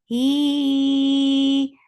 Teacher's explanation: mad munfasil jais, make it 4 counts long